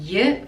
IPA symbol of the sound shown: jə